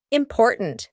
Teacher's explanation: I want you to use this word important because in the middle, we have that glottal T, import. And then at the end, we have a stopped T, important. There's no T that we actually speak at the end.